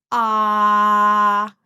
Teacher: The tongue is back. O, O, The A is a very open, unrounded O aperta.